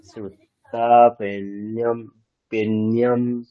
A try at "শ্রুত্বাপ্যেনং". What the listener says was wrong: নিয়ম নেই কেমন, মানে নয় জাফালা তো নেই, ওখানে নকার আছে কেবলমাত্র, তাহলে শ্রুত্বা পিয়েনম, পিয়েনম মানে নকারের যে স্বাভাবিক উচ্চারণ, মানে ওখানে তো নেই, জফালা নেই, আপনি জফালাটা বলছেন। পিয়েনম মানে নকারটাকে সিম্পলি রাখুন, নকারের সাথে কিছু নেই।